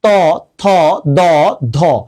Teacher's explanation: তুমি যখন উচ্চারণ করবা দেখবা তোমার জিভের আগা দাঁতের আগার সাথে লাগছে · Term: দন্ত ব্যঞ্জন